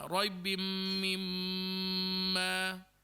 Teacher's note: mim syaddah dan juga nun syaddah, yang mana kita kena lamakan dia dengungan dia dalam dua harakat